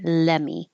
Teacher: I don't even have to put my tongue in the T position I can just say let me